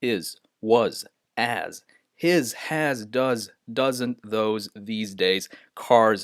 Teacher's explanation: often the S is pronounced as a z